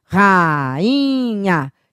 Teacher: Esse I é tônico, veja, ele faz hiato com a vogal anterior e está sozinho na sílaba